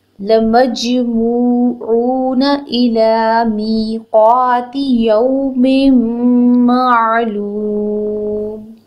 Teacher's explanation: میم کو فوراً جیم ساکن کے ساتھ ملانا ہے اور جیم ساکن پہ جھٹکا دینا ہے, قلقلہ کرنا ہے, بیکاز جیم جب ساکن ہوتا ہے تو اٹ بیکمز لیٹر آف قلقلہ.